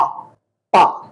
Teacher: मैंने जब पा और बा बोला तो ये दोनों मेरे होंठ आपस में टच हुए